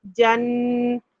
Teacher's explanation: نون کی درمیانی آواز خیشوم میں جاتی ہے، اور یہاں ساکن میں ادا ہوگا، تو یعنی مائنر سا بتانا ہے. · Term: غنہ